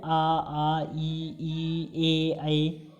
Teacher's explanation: जिन स्वरों के उच्चारण में ओठ वृत्तमुखी या गोलाकार नहीं होते हैं उन्हें आवृत्तमुखी कहते हैं। जैसे आ ई ए इसमें हमारा मुंह जो है वो गोलाकार नहीं हो रहा है, इसलिए इसे हम आवृत्तमुखी भी कहते हैं।